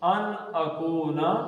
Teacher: کو دو حرکتیں ہیں, پیش کے بعد واو آ گیا ہے, مد اصلی بن گیا